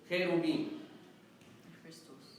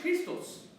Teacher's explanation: this letter is supposed to be pronounced always as a KH, a slightly aspirated KH.